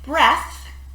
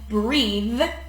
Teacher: in breath, TH is unvoiced, but in breathe, TH is voiced.